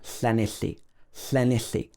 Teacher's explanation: you put your tongue to the top of your mouth like you're going to say a letter T, T, and then you blow around the sides of your tongue